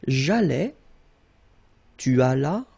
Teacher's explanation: remember final S is not pronounced